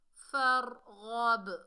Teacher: غین کو موٹا پڑھیں گے، حرف استعلا میں سے ہے، باقی ڈبل ساؤنڈ آئے گی کیونکہ یہ کتب جدن میں سے ہے، یعنی حروف قلقلہ میں سے ہے، ساکن حالت میں آ رہا ہے۔